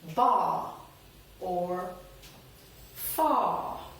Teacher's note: we just make the preceding vowel a little bit longer